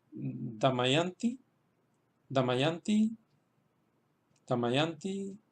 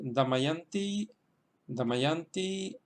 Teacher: el acento se queda en la sílaba yan porque detrás de la ya van dos consonantes y por tanto esa sílaba es larga